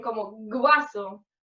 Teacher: ante los diptongos wa y we ocurre una prótesis de la fricativa velar sonora g, es como g.